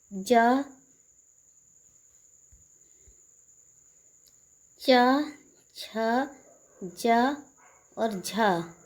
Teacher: जा, चा, छ, जा और झा, ये स्पर्श संघर्षी होते हैं।